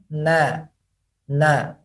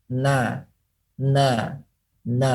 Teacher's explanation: Kemudian huruf nun, na, na. Huruf nun keluar daripada dua makharij, yaitu keluar daripada hidung dan juga keluar daripada lidah menempel kepada gusi secara bersamaan. Maka dua difokuskan, na, na, na.